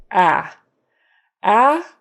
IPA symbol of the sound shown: æ